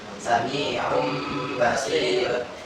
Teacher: Jadi tidak dibaca tanwinnya atau nun sukunnya, tapi langsung masuk ke huruf ba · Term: iklab